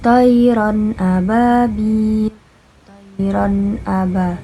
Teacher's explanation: Tayran terdapat fathatain bertemu dengan hamzah yaitu dibaca jelas, hukumnya adalah izhar. Dan di akhir kalimat terdapat mat tabi'iyah juga, dibaca 2 harakat.